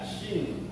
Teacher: Huruf shin terletak di tengah lidah.